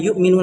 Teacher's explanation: حمزہ ساکنہ کو پڑھنے میں جھٹکا ہوتا ہے